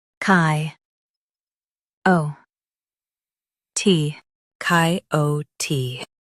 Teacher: Stress O and keep T clear.